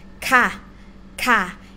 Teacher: the sounds go down low tone